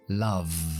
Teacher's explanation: La V es sonora. Love. Mi voz está vibrando. Así que la D al final tiene que ser un sonido sonoro que es D.